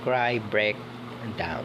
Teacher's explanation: the vowel sound involved a Glide or movement from one vowel sound to another within a single syllable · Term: diphthongs